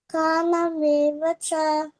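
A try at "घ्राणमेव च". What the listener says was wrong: ఘ్రాణమేవ చ ఘ్రాణం అంటాం కదా, ఉగ్రాణం అంటుంటారు పాతకాలంలో. ఇది కొంచెం ఒత్తు, అది ఘ్రాణం.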